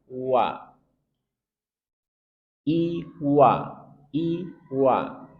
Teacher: makhrajnya dari dua bibir yang dimonyongkan dan tarqik